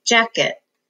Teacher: the first syllable has the accent